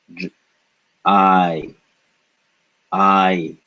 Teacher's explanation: the sound in English I is actually made up of two vowel sounds, ah followed by I. I, I. So it's explicitly shown in Hindi that this sound is made up of two vowel sounds.